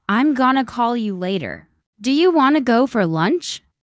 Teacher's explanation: Pronunciation is also about reductions. Words like going to often become gonna want to becomes wanna.